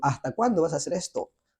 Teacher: Nosotros decimos, ¿hasta cuándo vas a hacer esto? No pronunciamos casi la letra S.